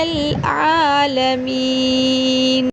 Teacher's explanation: عین کو حلق کے درمیانے حصے سے ادا کیا جائے